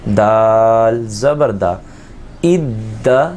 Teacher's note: یہاں جمع والا قلقلہ بھی ہوگا اور یہاں دال میں آواز موٹی نہیں ہوتی